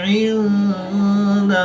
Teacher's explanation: मीम मुशद्दिद और नून मुशद्दिद में हमेशा गुन्ना होता है तो यहाँ पर हम गुन्ना आनी करके पढ़ेंगे। नून साकिन के बाद दाल हरूफ इख्फ़ा में से है तो यहाँ पर इख्फ़ा होगा, यानी गुन्ना ज़मानी करके पढ़ेंगे